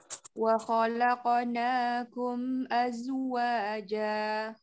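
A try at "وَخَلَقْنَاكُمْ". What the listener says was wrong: Lalanya jangan tebal ya. La tipiskan.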